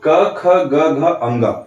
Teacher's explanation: हमारे अंदर से आती हुई वायु बाहर निकलते समय हमारे कंठ को स्पर्श करते हुए कंठ को टच करते हुए बाहर निकलती है। इसलिए इन सभी पांचों वर्णों क, ख, ग, घ, अंग का उच्चारण स्थान हो गया कंठ।